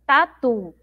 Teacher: A sílaba mais forte é o tu lá no final.